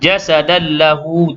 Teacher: Idgham bila gunnah, memasukkan tanwin ke dalam lam tanpa dengung.